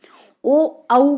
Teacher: ओ औ को बोलते हैं कंठोष्ठ, यानी कि कंठ और होठ से बोले जाने वाले